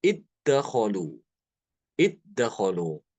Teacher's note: Zalnya hilang masuk ke dalam dal. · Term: mengidghamkan zal